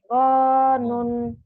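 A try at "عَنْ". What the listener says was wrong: kok gon? Orang ain kok gon? Anun atuh. Ana, auna, auna, aina, aina, anun.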